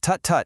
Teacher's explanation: Tut-tut is made of pure dental clicks